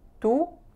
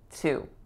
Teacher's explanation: the final vowel, too, is that diphthongized moving oo sound.